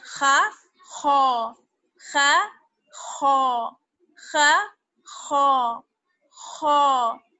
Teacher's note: موٹا اور اونچا پڑھا جانے والا حرف جو ہے وہ ہمارا خا ہے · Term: حرف مستعلیہ